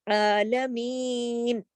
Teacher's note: عین کے اوپر کھڑی زبر ہے، ایک الف کے برابر پڑھی جائے گی